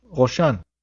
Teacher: Resh is rolled in the back of the throat like when you gargle salt water.